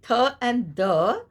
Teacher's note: the tip of the tongue is touching the upper teeth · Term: dental fricatives